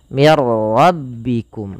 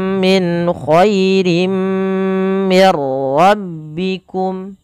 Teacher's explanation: Idgham itu memasukkan. Maka nunnya dimasukkan ke ro dan tidak boleh ditahan.